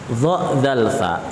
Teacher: Dia itu keluar dari makhraj yang sama, yaitu dari ujung lidah bertemu dengan ujung gigi seri depan bagian atas. Oke ya. Cara membacanya adalah dha, dzal, fa, ujung lidahnya harus dikeluarkan.